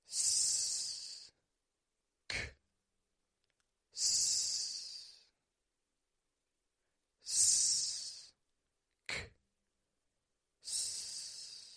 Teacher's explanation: You make an S, you stop the airflow, you make a K, K, and then you make another S.